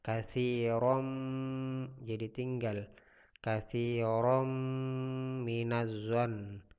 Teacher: Jadi di sini katsiran, di sini hukum bacaannya adalah idgham bigunnah. Jadi di sini berdengun ya.